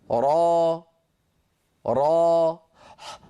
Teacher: هل لاحظتم الوتران لم ينقفلا، بقي الصوت تخامد وتلاشى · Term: حروف المد